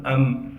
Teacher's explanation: حمزہ کو میم سے ملائیں گے اس لیے کہ میم ساکن ہے، بغیر غننے کے ملانا ہے، حمزہ میم زبر ام۔